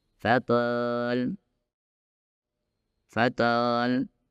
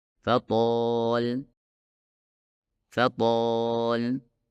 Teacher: jelas seperti fatal fthal sedangkan seharusnya berbunyi seperti ini fathol fathol jadi bagian belakang lidah harus diangkat dengan pas agar menghasilkan suara huruf tho yang tebal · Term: huruf to yang tebal